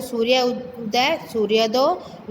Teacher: यानी जहाँ आ और उ का मेल होगा तो वो ओ हो जाएगा।